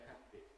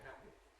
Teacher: Although we write two letters ‘pp’ in the word ‘happy’, we don’t say [ˈhæppi]. We say [ˈhæpi], simple quick consonant.